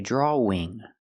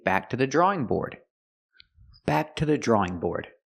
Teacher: the W in drawing is silent